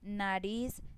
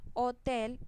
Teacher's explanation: tiene el acento en la última sílaba. Nariz tiene el acento en la última sílaba. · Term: palabras agudas